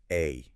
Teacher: Jaw drops a bit. Mouth is fairly open. And your tongue is pretty low and flat in your mouth. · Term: cat vowel